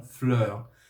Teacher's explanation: E em francês, fleur, F-L-E-U-R. Hoje em dia, esse E-U não se pronuncia mais como um ditongo, ele se pronuncia como E